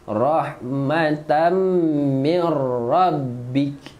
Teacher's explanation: Tanwin bertemu mim, dengung dan rapatkan bibir sebab ni mim.